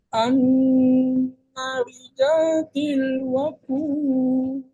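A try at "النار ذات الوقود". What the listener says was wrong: Nah, itu yang kedua Pak, itu irama yang kedua, yang ayat 6. Ini ayat kelimanya naknya panjang. An-naridzatil. Nah, tilnya diturunkan dulu. An-naridzatil waqud.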